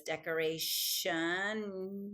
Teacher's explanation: the T next to an I becomes a sh sound